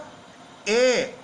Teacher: और ए का उच्चारण कंठ तालु, यानी ए कंठ और तालु से बोला जाएगा